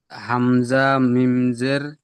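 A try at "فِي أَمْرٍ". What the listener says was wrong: এখানে জের নেই দেখেন এখানে জবার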